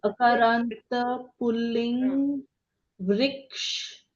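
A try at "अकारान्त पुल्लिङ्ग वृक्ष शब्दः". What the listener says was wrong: You shouldn't say, see the difference, I'll tell you. If you're just going to read vrikshaha or say ramaha, you will say ramaha, okay? when you say akaranta pullinga rama shabdaha, not ram shabdaha.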